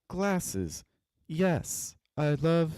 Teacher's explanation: that little sequence of three, four syllables is somewhat repetitive. All the pitches are pretty close together. Like I think if we had dropped on the Yes, that would have been effective.